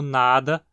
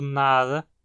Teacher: No espanhol isso ocorre com as oclusivas sonoras se tornando aproximantes intervocalicamente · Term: aproximação